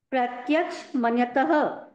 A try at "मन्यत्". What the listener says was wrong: मन्यत, कोई भी अक्षर के नीचे हलंत आए तो उसको पूरा नहीं बोलना है। हलंत है मतलब उसके साथ उसका स्वर नहीं लगा हुआ है, वो सिर्फ व्यंजन है बस।